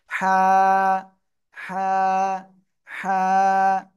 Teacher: ভিতরে অন্তর্ভুক্ত এটা ঠিক আছে এটা এক আলিফ টেনে পড়তে হবে গলার মধ্যখানে হালকা একটু চেপে এক আলিফ টেনে পড়তে হবে হালকা বাতাসও বের হবে মুখ দিয়ে ঠান্ডা বাতাস